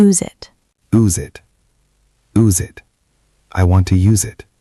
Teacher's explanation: Again, the verb use has a Z sound.